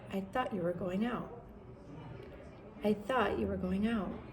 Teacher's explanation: you're going to have an intonation that goes up at the end because you're not so much making a statement as questioning what you thought